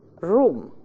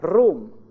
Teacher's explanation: Instead of pronouncing the flat r of English, they pronounce or they insert the trill r of Arabic.